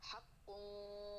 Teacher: जल्दी से काफ को पुर करके गुन्ने को हमने बारीक रखना है, ज़बान का आखिरी हिस्सा जल्दी नीचे की तरफ उतारना है, और गुन्ना हमारा कहाँ होएगा, होठों पे। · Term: काफ पुर